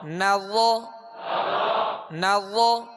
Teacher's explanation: ہونٹوں کو را میں گول نہیں کریں گے، را حروف مستعلیہ میں سے اس کو پر پڑھیں گے ، یہ پر پڑھنا اس کی خوبی ہے، اور نرمی کے